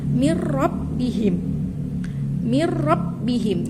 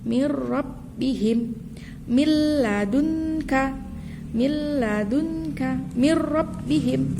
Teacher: Jadi ada nun sukun atau tanwin yang bertemu dengan huruf lam dan ro itu namanya juga idgham, dimasukkan tapi bila gunnah, tidak mendengung. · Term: idgham bila gunnah